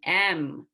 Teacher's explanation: which uses two lips and the air comes out the nose